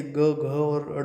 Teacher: ये ग, घ और ड़ बोलने से आपके गले में कंपन होता है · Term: घोष